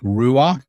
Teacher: This patak, you'll see it under a guttural at the end, you pronounce it just before the guttural. So roach, like ruach, spirit.